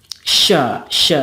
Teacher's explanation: syin juga ada tambahannya yaitu tafasyi atau menyembur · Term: tafashi